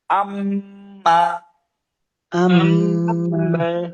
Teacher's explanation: যদি কখনো মিমের উপরে তাসদীদ হয় ওয়াজিব গুণনা করতে হয়